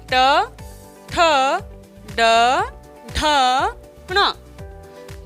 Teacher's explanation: तालु के पीछे वाले भाग को जब हम छूते हैं तो ये ध्वनियाँ निकलती हैं। तो उसे हम कहते हैं मूर्धा। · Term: मूर्धन्य व्यंजन